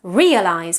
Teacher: in English, it's realize with initial stress